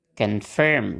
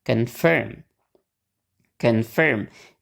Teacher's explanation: suku kata yang ada O-nya itu nggak di stress. Nah, berarti O-nya kita pakai schwa.